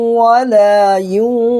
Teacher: میں سے بڑی قاف آ رہا ہے تو یہاں پر بھی نون کی آواز کو ناک میں چھپا کر کے پڑھنا ہے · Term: حروف اخفا